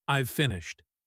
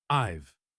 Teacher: In the present perfect tense like I have finished, we usually say I've finished. The have becomes just a v sound attached to I.